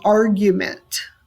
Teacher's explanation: dactyl is a stressed and two unstressed